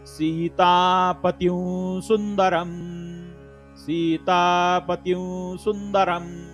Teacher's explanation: र वरती अनुस्वार आहे, अनुस्वाराच्या समोर स हे अक्षर असल्या कारणानं अनुनासिक वावचा उच्चार होतो